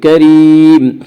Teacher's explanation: کریم یا مدہ، یا مدہ وہ یا جو ساکن ہو اس سے پہلے زیر ہو، یا مدہ کو ایک الف کے برابر کھینچ کر پڑھیں گے